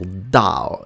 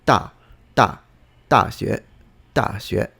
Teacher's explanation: You want to keep it in between a completely unaspirated T and what would be like a D, but in Romance languages rather than in English, if that makes sense.